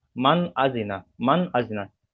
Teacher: নুন সাকিনের পরে হামজা এসছে, তাই নুন সাকিনকে বিনা গণ্যায় জাহির করে পড়তে হবে। একে ইজহার বলা হয়।